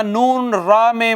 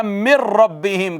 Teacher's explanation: تو من ربہم تھا، نون را میں مدغم ہو گیا تو یہ رہ گیا مر ربہم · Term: ادغام بلا گنہ